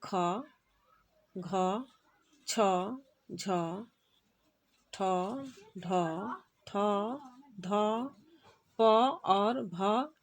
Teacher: इनके उच्चारण में क्या होता है कि अल्प प्राण से अधिक वायु निकलती है महाप्राण के उच्चारण में